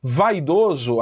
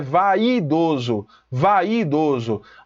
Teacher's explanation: eu tenho um ditongo decrescente vogal + semivogal